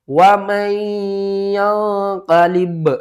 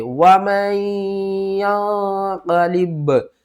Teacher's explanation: با کو ساکن کر کے قلقلہ کر لیتے